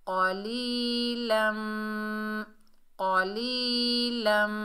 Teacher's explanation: ली, क़ौली, और लाम के ऊपर 2 ज़बर की तनवीन है, आगे मीम मुशद्दद है। लाम को मीम मुशद्दद से मिलाएंगे, और एक अलिफ की मिकदार गुन्ना होगा।